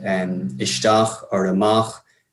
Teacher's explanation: we get words like an ishtar or a mach and loan words like tabak as well where it's on the second syllable rather than on the first one